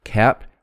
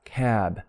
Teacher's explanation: notice the voicing makes it a little longer